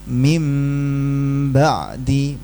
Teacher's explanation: Nanti di atas bnya atau di atas nunnya ada mim kecil. Bacanya nunnya diubah menjadi mim. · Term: iqlab, iklab